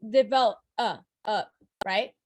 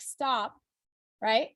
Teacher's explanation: that O right before the P in develop is not really sounded out. So it's not stressed. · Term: schwa